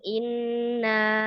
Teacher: Jadi madanya nggak ke hidung, tapi ketika neken in sedikit aja masuk ke hidung.